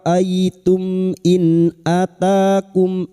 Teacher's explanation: nun sukun dibaca jelas tanpa bersenandung. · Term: idhar halqi